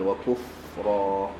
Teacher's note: kaf dengan fa insya-Allah mudah, nipis, kuf dan ra tebal.